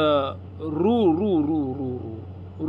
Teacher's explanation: उच्चार केला की जीभ आहे ना वरती ताळूला लागते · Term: मूर्धन्य वर्ण